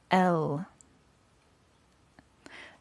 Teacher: start out with voiced a voice consonant or sound means that it uses the vocal cords to produce a vibration or humming sound in the throat put your finger on your throat and then pronounce the letter · you will notice a slight vibration in your throat and neck that is because it's voiced let's try that again el that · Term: voiced consonant